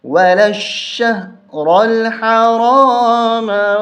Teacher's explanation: یہ الف بھی نہیں پڑھا جاتا، یہ الف بھی نہیں پڑھا جاتا، یہ لام بھی نہیں پڑھا جاتا۔ اس لام کو اس شین کے ساتھ ملائیں گے، لام شین زبر لش، شین ہاتھ برشہ۔